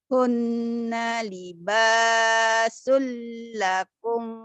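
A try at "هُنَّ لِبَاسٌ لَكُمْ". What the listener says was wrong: panjang-pendeknya salah Gak ada yang panjang disitu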